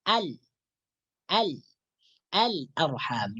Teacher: cara membaca Alif Lam Qomariah itu lem sukunnya dibaca dengan jelas disebutkan dengan jelas